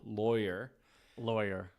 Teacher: In the North they say lawyer, like with an O, lawyer.